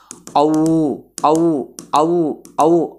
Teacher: చెప్తే మీకు బాగా అర్థం అవుద్ది ఔ పలకండి ఔ ఔ ఔ ఔ ఔ అనే సౌండ్ ఆ తో ఆ ధ్వనితో ప్రారంభమై ఉ ధ్వనితో ఎండ్ · ఔ అనే సౌండ్ ఆ ధ్వనితో ప్రారంభమై ఊ ధ్వనితో ఎండ్ అవుతుంది. అంటే ఔలో ఆ అనే కంఠ్యము ఇన్వాల్వ్ అవుతుంది, ఊ అనే ఓష్ట్యము ఇన్వాల్వ్ అవుతుంది. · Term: కంఠ్యోష్ట్యములు